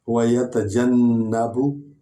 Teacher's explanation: ہم نے نون پر زور دیا ہے، سٹریس ہوا ہے کیونکہ اس پر شد ہے. شد والا حرف 2 بار پڑھا جاتا ہے، 2 بار پڑھا جاتا ہے، ایک دفعہ اپنے اعراب کے ساتھ، ایک دفعہ پچھلے حرف کے اعراب کے ساتھ.